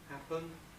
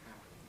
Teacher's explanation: I'm not going to go into it in too much detail, but the first process is a syllabic consonant formation process, which means that we take a sequence, schwa, n, happen, and we convert it into a syllabic n, happen. This is a very familiar rule.